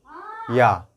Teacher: हमारा या होता है वो हमारे तालु से स्पर्श होकर बोला जाता है